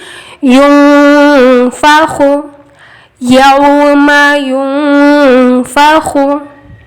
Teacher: خواہ میں خشخشی آواز آئے گی